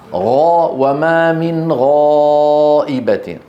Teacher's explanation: غاء فيها استعلاء طبعا لكن ما فيها انحصار، هي مستعلية منفتحة.